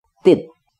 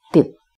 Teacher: Bila ada tasdid pada huruf ta, maka pada saat kode vokalnya, pada saat kasrohnya diketuk, terbentuk suku kata berakhiran T.